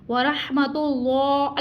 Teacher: را کے اوپر زبر ہے را کو پر پڑھیں گے اور ہا کو ٹھنڈی سانس کے ساتھ ادا کریں گے. وَرَحْمَةُ اللَّهِ اللہ کے لام سے پہلے حرف پہ پیش ہے اس کو پر یعنی موٹا ادا کریں گے اور اس کو ہم نے کھینچ کے ادا کرنا ہے.